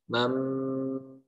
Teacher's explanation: Jadi hanya mengganti nun menjadi mim ya. Dirapatkan bibirnya, tidak ditekan, tidak juga ada jarak. Jarak seperti ada selembar kertas gitu ya. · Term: iklab